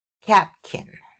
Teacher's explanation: Okay, so in the kin part in the second one in catkin uh the lax eye is going to be nasalized and the k sound at the beginning is going to be aspirated. King. Again, we have aspiration and nasalization.